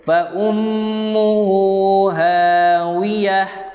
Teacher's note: Mim bersabdu dengungkan 2 harakat.